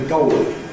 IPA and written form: ˈgɒʊli (goalie)